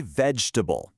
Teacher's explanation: That E and that A in the middle both have turned into schwas.